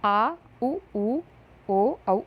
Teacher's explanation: है और वो है अ अब है पश्च स्वर यानी कि जीभ के पीछे वाले भाग से जिन स्वरों का उच्चारण होता है उन्हें पश्च स्वर कहते हैं